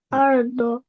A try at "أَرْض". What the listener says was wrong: হ্যাঁ, একটু মোটা করে বলবো, দরটা আমরা উচ্চারণ করবো।